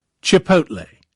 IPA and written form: tʃɪˈpəʊt.leɪ (Chipotle)